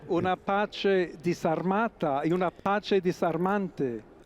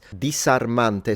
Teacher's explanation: So he definitely pronounces the S in intervocalic position. So when the S is in between two vowels, he's pronouncing it as it's a fricative still, but it's the S variety, rather than the Z variety.